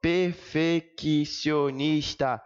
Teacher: Vejam que o som do I e do O, eles aparecem em sílabas diferentes, em respirações diferentes. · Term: hiato